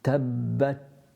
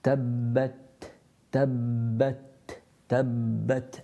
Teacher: It's like you go into the makhaarij of the ta, your tongue touches the gums of the central incisors. After you do that, there's a burst of air.